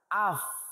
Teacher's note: fa dari bibir yang bawah serta ujung gigi dua yang atas